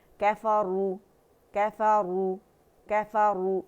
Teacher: کفروا، کفروا، کفروا، اور را جو ہے وہ مدہ، را کیونکہ ضمہ کے ساتھ ہے تو یہ اس کا موٹا ادا ہوگا، ہیوی ہوگا